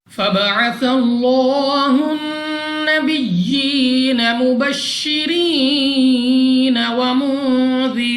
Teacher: यहाँ पर हमारे पास लाम ऑफ अल्लाह है और लाम ऑफ अल्लाह से पहले हर्फ पर ज़बर है, तो इस लाम ऑफ अल्लाह को पुर यानी मोटा पढ़ेंगे, मुंह और आवाज को खोलकर। नेक्स्ट हमारे पास नून मुशद्दद गुन्ना करके पढ़ेंगे, यानी नाक में ले जाकर पढ़ना है।